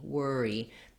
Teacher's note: And then we have two syllables, first syllable stress, so we want worry.